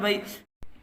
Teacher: با یا زبر بئی، یا ساکن سے پہلے زبر ہے، اس لیے یہاں یا لین ہوگا۔ یا لین کو نرم آواز کے ساتھ جلدی پڑھیں، معروف پڑھیں، مجہول آواز سے بچیں